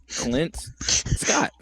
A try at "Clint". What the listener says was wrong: You're saying Sklint. Clint Eastwood. It's not. There is no S in Clint. It's just Clint.